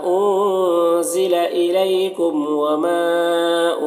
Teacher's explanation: ضلع کے نون میں اخفا ہوگا اور الیکم یہاں پر یا لین ہے، اسے نرم آواز کے ساتھ جلد پڑھنا ہے۔ میم کم کے میم میں اظہار شفوی ہو رہا ہے، اسے جلد پڑھنا ہے۔ وما میں جو مد ہے اس مد کو بھی مد منفصل کہتے ہیں۔